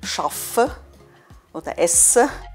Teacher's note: Und auch die Konsonanten sind in der Schweiz ein bisschen länger als in Deutschland.